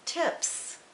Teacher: then suffix s will be unvoiced as in tips